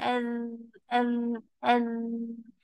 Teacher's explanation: bila sebut za yang betul dia akan rasa ada getaran